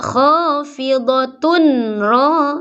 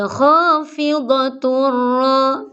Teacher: Ini sebenarnya ada tanwin tapi seolah-olah tidak ada tanwin, langsung ke ro bunyinya. Tidak khafidatun ro tapi khafidatur ro. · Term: idgham kamil